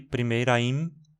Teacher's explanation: Só lembrando aqui também que, por exemplo, aqui primeira im, o ra do final de primeira e o in do começo de impressão funcionam como uma só sílaba, né? por causa do processo de sinalefa, onde uma vogal ato na final de uma palavra vai se juntar a uma vogal inicial de uma palavra seguinte, né? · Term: sinalfa